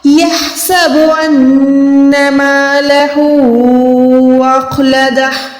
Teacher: خو کو ہم نے حلق کے اوپر والے حصے سے ادا کرنا ہے